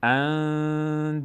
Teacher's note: نون از بینی ادا میشه، اندادن، مقداری هم روش توقف میکنیم.